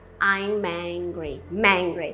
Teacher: Eu tô conectando o M com o angry.